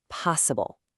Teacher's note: 3 syllables with the stress right at the very front